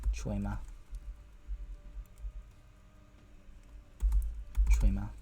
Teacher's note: I'm just gonna consider this an affricate, or like a long affricate, even though it's T followed by ch. I think that's gonna count as a double consonant for this rule, and it's just gonna be ch.